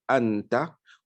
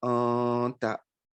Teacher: Donc, lorsque on a un nun sakin, un nun portant soukoun qui est suivi par une lettre de ikhfa, alors on va lire le nun entre la prononciation claire et puis la disparition totale. Donc, ça sera une dissimulation, on ne va pas bien prononcer. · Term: al-ikhfa al-haqiqi